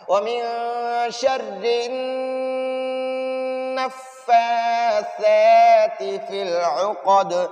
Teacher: ادھر نون مشدد پر ہمیشہ غنہ کرنا ہے